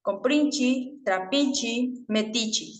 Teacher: además la vocal e al final de cada palabra suele ser reemplazada por la vocal I